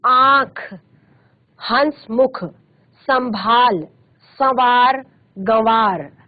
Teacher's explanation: मात्रा रूप अनुस्वार है और अनुनासिक यह मूलत स्वर होते हैं इनका उच्चारण मुख और नासिक दोनों से होता है